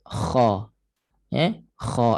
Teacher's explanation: Biar kha tu cantik, tebal dan makhrajnya kena tepat lah tempat keluarnya. Di mana tekak atas sekali, hujung kerongkong. Kita rasa macam nak keluarkan sesuatu daripada tekak.